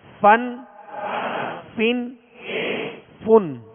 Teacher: اوپر کے سامنے والے دونوں دانتوں کے جو کنارہ ہے وہ نچلے ہونٹ کے تر حصے سے لگے تو فا ادا ہوتا ہے، فا۔ اس کو فا واو کی طرح ادا نہیں کریں گے اور نہ ہی دونوں ہونٹوں کو ملا کے پھا پڑھیں گے، بلکہ اوپر کے سامنے والے دو دانتوں کے کنارے اور نچلے ہونٹ کا تر حصہ یہ مخرج ہے یعنی نکلنے کی جگہ ہے فا کی.